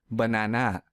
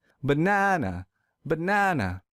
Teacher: because I don't stress the second syllable so to fix this I will stress the second syllable real hard